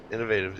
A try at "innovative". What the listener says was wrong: You're missing a couple of vowels there.